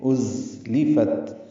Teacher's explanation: ازلفت میں ذات صفیر کی آواز سے ادا کریں گے، ازلفت. لام کو جلدی اور معروف پڑھیں گے، باریک پڑھیں گے، فا کو تا سے ملائیں گے، تا ساکن پہ ہمس ہے، فت ازلفت.